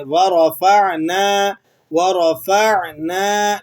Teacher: نون الف زبر نہ، اس کو آپ نے 1 الف کے برابر کھینچ لینا ہے